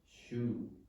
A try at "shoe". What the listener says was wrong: Not perfect. Longer vowel.